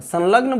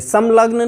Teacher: ला से पहले जो अनुस्वार आया है उस अनुस्वार का उच्चारण न होगा। और हम करते भी हैं, संलग्न बोलते हैं, संलग्न नहीं बोलते, समलग्न नहीं बोलते, संलग्न बोलते हैं, वही बोलते हैं।